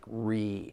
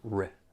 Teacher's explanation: Sometimes I hear people stress the first syllable and I hear that long e sound like re instead of a ri